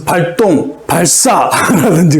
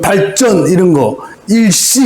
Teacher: 한자어 리을 뒤에 된소리로 나잖아요